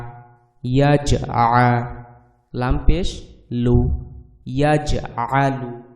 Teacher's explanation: এখানে জিমের উপরে জজম রয়েছে, জিমটাও হচ্ছে আমাদের কলকলার হরফ, অতএব জিমেও আমাদেরকে ধাক্কা দিয়ে পড়তে হবে, কলকলা করে পড়তে হবে।